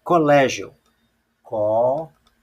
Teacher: a sílaba tônica aqui é o lé. Ou seja, a sílaba tônica não é a última, é a penúltima. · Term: paroxítona